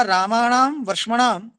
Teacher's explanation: मूर्धन्ययोः रशयोः प्रयत्न महिम्ना दन्त्यो नकारो मूर्धन्यताम आपद्यते। रामाणाम में र और वर्ष्मणाम में श, इनकी प्रयत्न महिमा से जो दंत्य न है, रामा नाम का जो न, वर्ष्मनाम का न, वो मूर्धन्यताम णत्वम आपद्यते, वही णत्व को प्राप्त होता है।